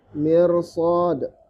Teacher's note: Ini ro-nya dibaca tebal. Ro-nya dibaca tebal. Meskipun memenuhi syarat dia tipis karena sebelumnya kasroh.